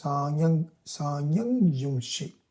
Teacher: when this makara is followed by a ya. Okay, then the makara also becomes a nasal ya